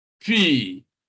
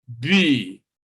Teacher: This is a voiceless plosive, bilabial plosive to be specific, all right? And then the voiced counterpart is B, P, B, bo, all right?